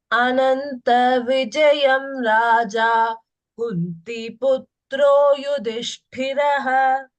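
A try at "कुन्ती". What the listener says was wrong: Kunti, don't say Kunti. Ti is outside. See that it is Dirgha. Kunti Putro Yudhishthiraha.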